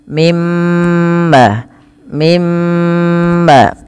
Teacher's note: suara nunnya dimasukkan ke mim dan ditahan sepanjang dua harakat